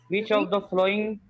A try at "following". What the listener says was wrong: Following. Flowing नहीं.